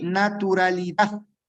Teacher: Eh, tiene la sílaba tónica en la última sílaba, ¿sí? Mayor fuerza de voz en la última sílaba y termina en D, por lo tanto, no se eh tilda, siendo esta otra palabra aguda sin tilde.